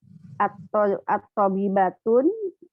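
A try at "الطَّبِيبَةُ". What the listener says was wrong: Jangan ditanwin.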